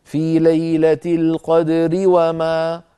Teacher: في الوصل الراء مكسورة إذن هي مرققة